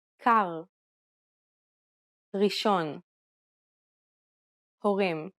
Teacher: Unlike the English R, which is pronounced with the tip of the tongue at the front of the mouth, the Hebrew R is pronounced using the back of the tongue with a slight roll. You can think of it like gargling air at the back of your throat.